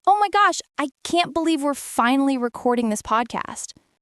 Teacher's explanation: the rising tone at oh my gosh, the little breath in the middle, the smile in the voice